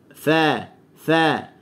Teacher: fa hujung gigi atas dengan batni syaffah, perut bibir bawah ni